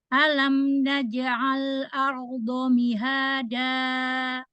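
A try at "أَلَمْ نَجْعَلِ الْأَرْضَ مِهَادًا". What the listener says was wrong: Naj'al. Tadi kayaknya lamnya sukunya naj'alil.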